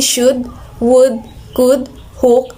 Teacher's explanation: high back lax round vowel, lax version of U